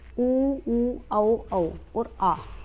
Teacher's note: वर्तमुखी है। क्योंकि इन्हें बोलते टाइम हमारे होठ की जो आकृति है, वो गोल हो जाती है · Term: वर्तमुखी स्वर